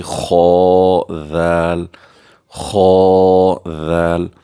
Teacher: خا کو موٹا کر کے پر کر کے پڑھیں گے کیونکہ یہ مستعلی حروف میں سے ہے